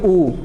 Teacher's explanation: हम बोलेंगे ऊ तो हमारा मुंह क्या हो रहा है, मुंह हमारा एकदम मुखाकृति गोल हो जा रही है, मतलब ओठों का आकार बदल रहा है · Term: ओष्ठ वर्ड